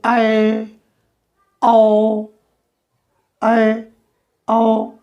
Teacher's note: अर्ध विवृत का मतलब हुआ आधा खुला, माने कहने का मतलब यह कम खुला रहेगा